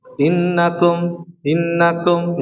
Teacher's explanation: Harusnya dibaca kum monyong ya. Tapi enggak dibaca kum artinya mencampur dengan fathah berarti tidak dimonyokkan ya. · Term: suara damah